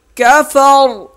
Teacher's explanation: را ساکن ہو جائے گی اور موٹی بھی ہوگی